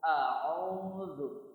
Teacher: Jadi disempitkan tenggorokan bagian tengahnya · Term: ain